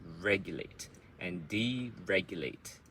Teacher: So reg is the loudest, and it's one beat.